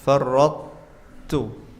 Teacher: Ini namanya idgham naqis. Lidahnya ditempelkan dulu ke langit-langit karena sifatnya itbaq.